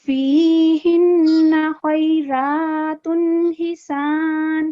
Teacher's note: इसमें तनवीन के बाद हरूफे हल्की आए हैं जिसकी वजह से हम क्लियर पढ़ेंगे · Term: इजहार